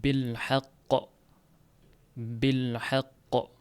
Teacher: qof harfida tashdid bor, qalqala ham bor. Mana shu tashdid bilan kelgan qalqala eng kuchlisi bo'ladi. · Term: tashdidli qalqala